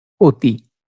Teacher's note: অধ্বনির বিবৃত উচ্চারণে চোয়াল বেশি ফাঁক হয়, ঠোঁট তত বাঁকা বা গোল হয় না। কিন্তু সংবৃত উচ্চারণে চোয়ালের ফাঁক কম, কিন্তু ঠোঁট গোলাকৃত হয়ে ও এর মতো উচ্চারিত হয়।